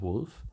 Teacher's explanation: Let's use an inverted Karen or an inverted stylized U in this case. Similarly, when a short O is pronounced as a foot vowel, as in wolf